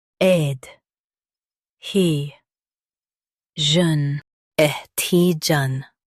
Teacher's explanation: Stress he and keep jeune light.